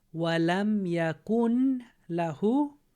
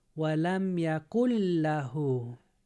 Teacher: So the lam combines into the noon. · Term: idgham